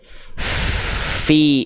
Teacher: hams itu kadarnya adalah mengalir nafas teman-teman sekalian apa mengalir nafas contoh huruf Fa dia punya sifat hams itu mengalir nafas